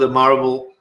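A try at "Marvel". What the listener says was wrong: Not marble, because that's what it sounds like when he says B's and V's. Always switches them. He is a B.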